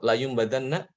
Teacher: maka nun sukun atau tanwin tadi itu diubah menjadi huruf mim. Ya, huruf mim, benar-benar huruf mim. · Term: iqlab